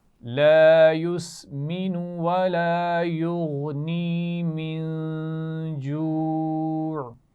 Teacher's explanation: من جوع، نون ساکن کے بعد جیم آ رہا ہے تو غنہ بھی ہوگا اور آخر میں پھر عین کے مخرج پہ وقف کیا جائے گا.